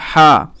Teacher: এই বড় হা যেটা, এটা গলার মধ্যখান থেকে হা, আর এই যে ছোট হা এটা গলার শুরু থেকে, শুরু হা লাগছে, ঠিক আছে।